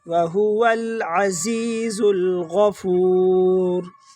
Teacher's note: زا کو ڈائریکٹ لام کے ساتھ ملائیں گے، بیچ میں سے الف حذف ہو جائے گا · غین کو موٹا پڑھیں گے، ماں لوگ مسٹیک کرتے ہیں، اس میں غین کو عین پڑھ لیتے ہیں